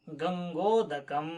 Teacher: और ओ, यह ओ कंठ ओष्ठ वाला है। तो ओ दो तो कंठोष्ठम।